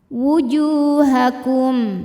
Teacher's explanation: Juh mad thobi'i dzohiri karena ada waw sukun didahului baris dhommah. Maka huruf jim panjang dua harakat